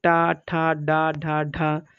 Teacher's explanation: ये सब मूर्धन्य से होती हैं